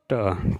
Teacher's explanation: मूर्धन्य, अल्पप्राण और अघोष व्यंजन वर्ण का उदाहरण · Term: मूर्धन्य, अल्पप्राण, अघोष, मूर्धन्य अल्पप्राण अघोष